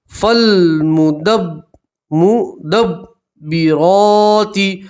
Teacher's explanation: فا کو لام سے ملائیں گے، الف نہیں پڑھیں گے